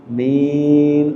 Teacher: Panjang A-nya 2 aja, jangan panjang amin. No, 2 aja. Min boleh panjang sampai 6 karena matarid disukun tadi.